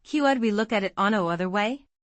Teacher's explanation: Could we look at it another way? Stress falls on another and way.